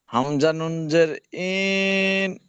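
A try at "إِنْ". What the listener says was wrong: ই টান হয়ে যাচ্ছে, ইন।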